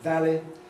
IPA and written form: ˡvæli (valley)